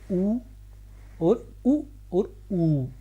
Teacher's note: उ तो बिना होठों के ये नहीं बोला जाएगा। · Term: ओष्ठ